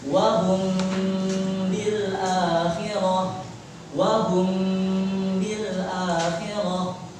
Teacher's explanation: Jadi ketika ada ikhfa, mim sukun bertemu dengan ba, kita gunakan di antara izhar dan juga idgham. Tengah-tengah sini 2 harokat. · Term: ikhfa syafawi